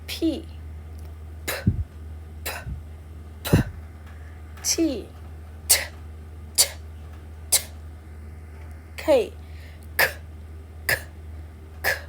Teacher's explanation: for this group you need to have the air out when you pronounce the sound so you need to have some energy to make the sound